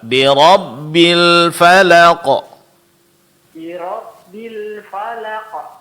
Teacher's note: huruf ra lebih ditebalkan tasdid pada ba itu lebih jelaskan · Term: tasydid pada ba